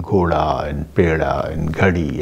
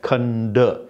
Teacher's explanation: Whenever d occurs between two vowels, then d changes to r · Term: flapping